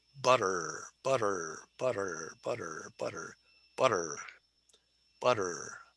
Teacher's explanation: Okay, this is called a flap because the tip of your tongue goes like this. So when I say butter, the tip of my tongue flaps my alveolar ridge